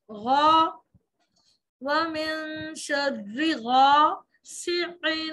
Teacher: غین کو غوا نہیں کرنا الف کو بھی ساتھ ہی موٹا کر لینا ہے